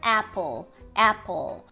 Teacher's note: é o A, aquela mais longa, mais baixa, A. A gente tem o P, que é normal pra gente, app.